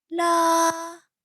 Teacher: As described here, it is a high flat tone, and this sound is produced at the top of your vocal range, and it sounds like singing. It is high and it is flat, so it doesn't rise, it doesn't fall. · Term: first tone